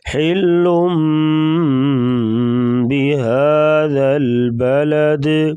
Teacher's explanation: حل پہ غنہ نہیں کریں گے، یہاں پر ادغام ہوگا، ادغام بلا غنہ۔ ادغام بلا غنہ 2 حروف میں ہوتا ہے، لام اور را میں ادغام ہوگا یعنی غنہ نہیں ہوگا، اور 4 حروف میں غنہ کرتے ہیں، وہ آگے ہم پڑھیں گے انشاءاللہ۔